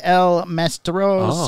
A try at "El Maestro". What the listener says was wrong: M-A-E? You said Mastro.